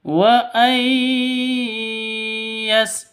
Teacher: Wa ay yastafifna [Musik] khairulahun wa ay yastafifna khairul lahun Di sini ada nun mati bertemu dengan ya. Nun mati bertemu dengan ya. Cara bacanya itu masuk ke ya disertai dengung. Wa ay yas seperti itu disertai dengung karena idghamun idgham bighunah.